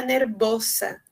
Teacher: E o som do S também, que no espanhol é sempre surdo, nervosa, em espanhol seria nerviosa. E no português, né, o som é de Z, é um S sonoro, né? Então, os hispânicos têm muita dificuldade de pronunciar esse S sonoro, ou Z, né, no português.